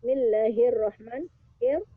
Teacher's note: Dia alif lamnya tidak terbaca, hanya masuk huruf ro, karena huruf ro huruf samsiah dan bukan huruf nun. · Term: alif lam samsiah